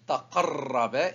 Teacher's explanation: Donc on double le ra, la troisième lettre qui porte la shedd, la marque du W, qui ressemble au W. Donc on double la lettre et on dit taqarraba et c'est le R roulé, c'est le ra, raba.